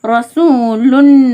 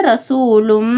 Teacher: லம் பேஷலன் ரசூலுன் இன் சவுண்டுக்கு அப்புறமா 28 எழுத்துக்கள் என்ன எழுத்து இட பெற்றிருக்கோ அந்த எழுத்துக்கான சட்டத்தை அமல்படுத்தனும் இங்க மீம் இது குனாவின் எழுத்து மீம் இடம் பெற்றிருக்கு அதனால நம்ம என்ன பண்ணும் இன் சவுண்ட முற்றிலமா நீக்கிட்டு இம் சவுண்ட சேர்த்து